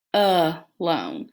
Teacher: it with an upside down e kind of in the schwa it's when a makes a muffled sound in an unstressed unaccented syllable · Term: schwa sound